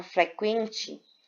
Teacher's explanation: Vai funcionar o U como uma semivogal e o E como uma vogal. Então, nós vamos ter aqui um ditongo crescente, né? Som fraco do U e o som forte do E.